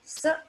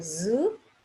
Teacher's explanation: You'll find this is again a pair, S and Z, because movement of the organs is same. The only difference is S is voiceless and Z is voiced.